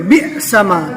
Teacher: حمزہ کو کیسے پڑھیں گے؟ جھٹکا دے کر پڑھیں گے